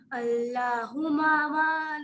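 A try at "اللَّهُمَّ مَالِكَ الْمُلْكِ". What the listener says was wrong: ہما نہیں، دیکھیں میم پر کیا ہے، اللہم مالک الملک.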